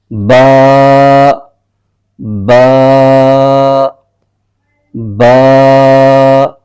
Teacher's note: दोनों होठों के जो तर हिस्से हैं उनके आपस के मिलने से बा हर्फ अदा होता है · دونوں ہونٹوں کے تر حصے سے ایک حرف ادا ہوتا ہے. یہ اوپر نیچے دونوں جو ہونٹ ہیں ان کا جو اندر والا جو تر حصہ ہوتا ہے ان کے دونوں کے ملنے سے ایک حرف پڑھا جاتا ہے